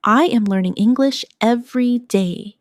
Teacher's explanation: Notice how my voice rises slightly on learning and falls at the end on day.